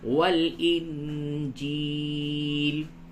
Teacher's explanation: نون ساکن کے بعد جیم ہے، اس جگہ پہ اخفا کیجئے